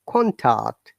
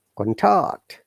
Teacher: Higher to lower, noun, contact. Lower to higher is verb, contact. Contact, look, the sound is going up.